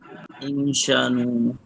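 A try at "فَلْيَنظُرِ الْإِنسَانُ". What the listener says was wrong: এই যে এখানে শিন না, এটা হলো সিন, সানু, ফাল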